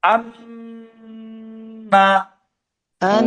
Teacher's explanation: নুনের উপরে তাসদীদ, তাই ওয়াজিব গুণা হয়েছে।